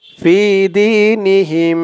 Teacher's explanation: জেরের পরে ইয়া সাকিন থাকলেও এক আলিফ টান দিয়ে পড়তে হয়।